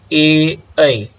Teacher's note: उसके बाद में आपके पास में दो स्वर है, ए और ए। जब ये दो लेटर्स आप प्रोनाउंस करते हो तो उसका उस टाइम में कंठ और तालु मीन्स गटरल एंड पैलेटल दोनों काम करता है हमारा, ए ऐ।